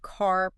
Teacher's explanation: in American English it's often very strong that R